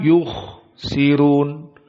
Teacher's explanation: kha-nya harus dibuang nafasnya. Jangan ditelan. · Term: hams